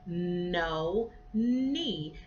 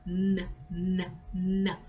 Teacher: we've gone from pressing the lips together to slightly putting the tongue at the top of the mouth, what we call an alveolar sound.